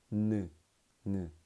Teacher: 파열음이라 볼 수가 없는 게 코 쪽에서 나온 소리가 아주 강하거든요.